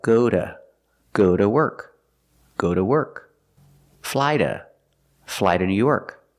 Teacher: sometimes it's pronounced duh when it's not stressed and it's after a vowel.